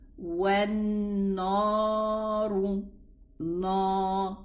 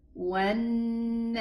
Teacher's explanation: be careful, be aware not to elevate the noon. Don't say وَالنَّارُ.